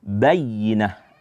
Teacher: Ya, dia yang bertasydid itu maka nanti ada namanya nabrah, penekanan. Maka kita harus menekan suara kita pada huruf ya, sehingga dibaca bayyinah, ya.